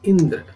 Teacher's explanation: यहाँ बलाघात ई पर है